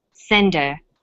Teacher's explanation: send her send is the strong form and her is weak because her is not stressed we drop the initial H sound so it's pronounced sender